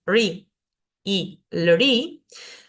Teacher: estas dos raras que se pronuncian RI y LRI, que son como una R seguida con una I chiquitita, pero además es un sonido cerebral. Este puntito debajo indica que lo tengo que pronunciar con la lengua hacia el paladar.